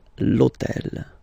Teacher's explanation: remember that in French we don't pronounce H, okay, so basically the first sound of the word is the vowel O